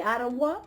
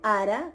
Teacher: asimiló la vau a la ro, y después obviamente desaparece